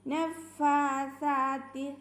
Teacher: നഫാസാത്തി ഫിൽ ഉഖദ് ഫാൻ്റെ കൂടെ എന്ത് ചെറിയ അലിഫ് മദ് ഉണ്ട്, സാഇൻ്റെ കൂടെയും ഉണ്ട്. അപ്പോൾ രണ്ടും ഉച്ചരിക്കുമ്പോൾ 2 കൗണ്ട് നീട്ടണം. നഫാസാത്തി സാ ശ്രദ്ധിക്കുക, കുറച്ച് എയർ നമ്മുടെ പല്ലിൻ്റെ ഇടയിലൂടെ കുറച്ച് എയർ പുറത്തു പോകണം.